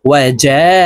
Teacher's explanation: এই জিমকে চার আলিফ টানে পড়ব